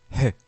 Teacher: il transcrit le son d'un H avec une expiration forte, comme lorsqu'on embue un miroir. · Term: H-point